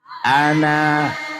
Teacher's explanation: Bila wakaf dibaca panjang dua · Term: panjang 2 harokat